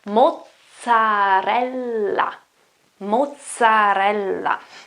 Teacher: The first one here is a double Z, or a double Z if you're American, if you prefer, and a double L then. So you have to pronounce those two consonants in a longer way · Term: double consonants